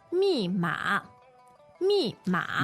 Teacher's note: the two elements there, fourth tone and third tone